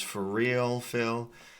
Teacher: these two R's melt together, so it becomes for real, Phil. And make sure you're pronouncing that with a nice dark L sound as well.